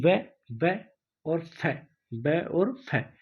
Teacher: व और फै का उच्चारण करते समय नीचे का ओष्ठ ऊपर वाले दांतों को स्पर्श करता है, अतः इसे दंतोष्ठ व्यंजन भी कहते हैं।